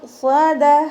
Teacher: സ്വാദ് ഉയർത്തിച്ചരിക്കുന്ന അക്ഷരങ്ങളിൽ പെട്ടതാണ്. അപ്പോൾ ഉയർത്തിയിട്ട് തന്നെ പറയാൻ ശ്രദ്ധിക്കുക. സ്വാദ. ഇവിടെ ത മർബൂത്തയിൽ നിർത്തുമ്പോൾ ഹാ സുക്കൂന് കൊടുത്തിട്ട് നിർത്താം കേട്ടോ.